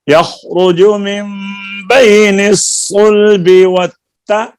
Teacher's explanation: والترائب نہیں آپ بیٹا آپ پڑھ رہی ہیں والترائب نہیں و تا علیحدہ ہے را علیحدہ ہے تا کو را سے ملانا نہیں